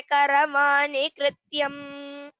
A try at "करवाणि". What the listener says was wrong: Only one place. Karavani. The nakara. That did not come well. Karavani. I heard it as that. So otherwise the pronunciation was good.